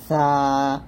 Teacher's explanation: আর সাটা যখন উচ্চারণ করবেন জিহ্বাটা নিচে দাঁতে লাগানো যাবে না, জিহ্বার আগাটা উপরে দাঁতের আগে লাগিয়ে পাতলা করে উচ্চারণ করতে হবে